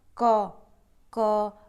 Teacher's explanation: क आपकी यह ध्वनि है जो कंठ से स्पर्श करती हुई बाहर को निकल रही है, तो इसे हम स्पर्श व्यंजन कहते हैं।